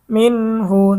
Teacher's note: গুন্না ছাড়া স্পষ্ট পড়তে হবে হা হচ্ছে ইজহারের হরফ